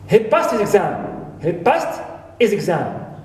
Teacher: But for second possessive pronoun or possessive adjective, right here, this pronoun, his, the h is dropped, omitted, and pronounced it is. Not his, it's is.